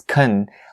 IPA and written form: kən (can)